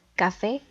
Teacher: café dividida en dos sílabas y la sílaba tónica recae en la última